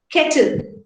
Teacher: the L is a consonant, but in that particular syllable, it acts like a nucleus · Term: syllabic contoid